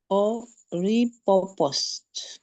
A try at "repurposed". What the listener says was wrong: Yes, way better. That gave you hard time before, but now it's way better.